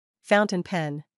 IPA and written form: 'faʊntinpen (Fountain-pen)